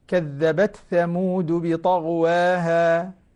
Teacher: وضح التاء هنا، التاء مظهرة